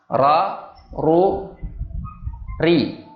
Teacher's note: Pengucapan huruf yang disertai bergetarnya ujung lidah. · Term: takrir